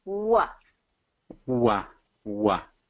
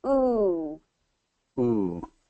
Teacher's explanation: it's just a matter of getting that movement with the w whereas the oo just stays static